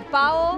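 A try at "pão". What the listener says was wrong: No, hay una acentuación arriba. Pau.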